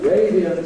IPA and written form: ˈreɪdiənt (radiant)